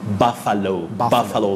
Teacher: correct or the right pronunciation of that word is buffalo buffalo that letter u takes what we call the mid central sound